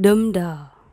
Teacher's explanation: two meters i am unstressed followed by stressed and truck cake stressed followed by unstressed